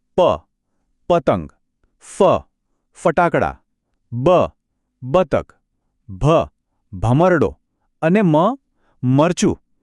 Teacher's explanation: આ અક્ષરો બોલવા માટે ફક્ત બંને હોઠનો ઉપયોગ થાય છે. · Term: પ વર્ગ